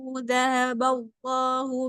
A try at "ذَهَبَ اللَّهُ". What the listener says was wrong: ذهب، لا يوجد ألف بعد الذال. ذهب هكذا، لا نقول ذهب الله، سلام، خطأ. ذهب، ذال دانها، ذهب.